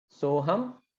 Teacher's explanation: So that is why these two, even though they are two syllables, the time taken to pronounce Soham is longer. Why? Because they are guru syllables.